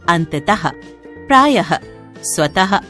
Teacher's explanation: उच्चारण के समय विसर्ग व्यंजन के साथ ह की ध्वनि देता है, जबकि प्रयोग करते समय इसका स्वरूप 2 बिंदु के रूप में होता है।